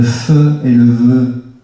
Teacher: Le fe et le ve, labiodental, je le fais avec mes dents et ma lèvre du bas. Seule différence, vibration des cordes vocales, invisible.